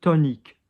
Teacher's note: When you have an N and the vowel, there is a vowel after it, it goes high, not low. So not ton, but tonique.